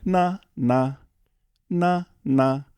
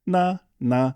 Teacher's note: There's a high tone, and there's a lower tone.